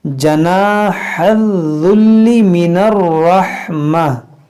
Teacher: हा को वस्ते हल्क से अदा करेंगे, दाल को नरमी के साथ